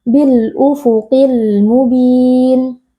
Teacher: huruf Istia kita angkat pangkal lidahnya